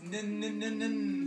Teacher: The tip of my tongue is touching the top of the front of my mouth. It's making a shape like this.